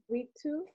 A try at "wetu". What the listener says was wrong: No, don't take E as an English letter, take it as another letter. So instead of pronouncing it as E, just use the way it is, A.